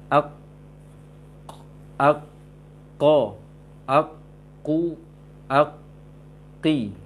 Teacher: Pangkal lisan yang berat ke tenggorokan, maka keluar di sana bibir tidak monyong, rasakan pangkal lisan yang berat ke tenggorokan, hampir-hampir ke tenggorokan dia.